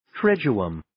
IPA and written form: 'triːdjʊəm (Triduum)